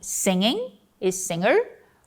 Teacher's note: a nasal do inglês é articulada em uma região mais ao fundo do palato do que a nasal do português.